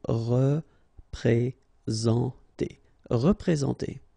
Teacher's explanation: it's a nasal, so it goes in your nose, and it's en.